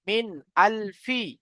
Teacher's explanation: তারপরে মিম নুন জের মিন, নুন সাকিনের পরে হামজা এসেছে, হুরুফে হালকি 6টি অক্ষর, হামজা হা, আইন হা, গাইন খ, এই 6টি অক্ষরের মধ্যে থেকে হামজা এসেছে নুন সাকিনের পরে, তাহলে নুন সাকিনকে বিনা গুণনা জাহির করে তাড়াতাড়ি পড়তে হবে